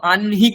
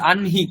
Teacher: নকার হচ্ছে ত বর্গের পঞ্চম বর্ণ তার সাথে হকারের যোগ রয়েছে তাহলে নকারের উচ্চারণ প্রথমে হবে পরে হ বর্ণের উচ্চারণ হবে